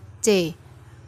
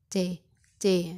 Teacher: Nah, panjenengan rasakan adalah daun lidah. Jadi bukan ujungnya lidah nggih, tapi daun lidah atau yang lidah tengah bertemu dengan langit-langit atas. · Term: suara palatal